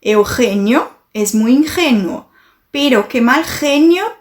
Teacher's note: Brinca com o som de G, aquele G na garganta, tá? O somzinho do catarro.